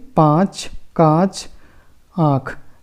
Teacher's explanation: यानी कि जब हम इन वर्णों का उच्चारण करते हैं तो हमारे नाक से और मुख से बराबर की हवा बाहर निकलती है, यानी कि इन दोनों को हम बराबर यूज में लेते हैं, उन्हें हम अनुनासिक कहते हैं।